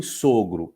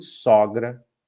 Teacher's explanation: uma distinção de abertura da vogal o, que em sogro é fechada e em sogra é aberta